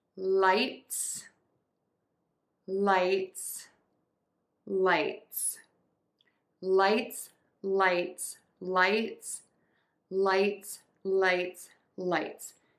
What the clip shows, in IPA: laɪts